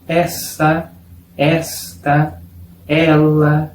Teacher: Es un sonido abierto, la vocal E pero más abierta.